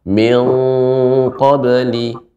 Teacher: Pertama pada kata min di sini ikhfa pada huruf istilla dibaca dengan tebal